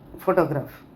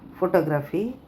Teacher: Photograph, first syllable. Photography, second syllable.